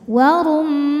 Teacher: Mad thabi'inya alif didahului fathah, huruf yang disukunkan nya nun. Maka mimnya panjang boleh dua, boleh empat atau enam harakat asal konsisten dalam satu kali baca. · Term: mad arid lisukun